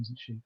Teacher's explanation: we would go down because it's not a real question